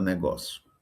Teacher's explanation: No final tem um ditongo. Aí o que é que ocorre em negócio? Esse ditongo se transforma em monotongo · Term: monotongação da fala